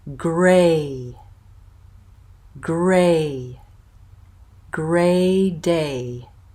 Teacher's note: we're going to start with the tense mid front vowel which is a a Gray Gray day and again this is